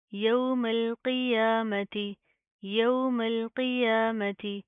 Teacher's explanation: پھر اس میم کو ہم اس لام کے ساتھ پلس کریں گے، میم لام زبر مل، قوف زیر قی، یا کھڑا زبر یا، میم زبر ما، تا زیر تی، یوم القیامتی، یوم القیامتی. قوف کو پراپر منہ کو پور کر کے پڑھیں گے، موٹا پڑھا جائے گا